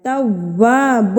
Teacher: تا کے اوپر تشدید واو کے اوپر تشدید تو مضبوطی سے اس کو پڑھنا ہے